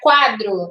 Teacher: na palavra quadro eu tenho q u mas eu escuto o barulho do U